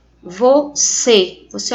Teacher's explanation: O acento circunflexo ele é indicativo de som fechado.